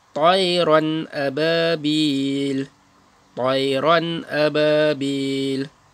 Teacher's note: Jadi tanwin bertemu dengan huruf hamzah. Jadi hukum bacaannya tak payah dengung. · Bacaannya jelas, terang tanpa dengung.